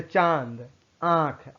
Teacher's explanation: अनुनासिक मतलब चंद्रबिंदु, इसका उच्चारण नाक और मुंह दोनों से होता है। इसके उच्चारण में लघुता होती है, यानी उच्चारण में थोड़ा सा कम उच्चारण निकलता है, इसे चंद्रबिंदु भी कहते हैं।